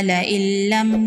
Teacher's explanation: نون ساکن کے بعد حروف یرملون میں سے لام ہے، یہاں پر ادغام ہوگا بلا غنہ